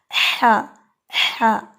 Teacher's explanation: یہ احتیاط کرنی ہے کہ آپ کا ہا جو ہے وہ خواہ کی طرف نہ جائے